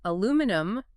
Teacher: the British way with five syllables